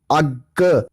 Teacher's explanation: For example ਜਦੋਂ ਤੁਸੀਂ ਅੱਗ ਨੂੰ ਅੰਗਰੇਜ਼ੀ 'ਚ ਲਿਖੋਗੇ AGG, ਅੱਗ, ਤਾਂ ਜਿਹੜਾ ਗੱਗਾ ਹੈ ਇਹ ਦੂਰਾ ਉਚਾਰਨ ਹੋ ਰਿਹਾ ਹੈ।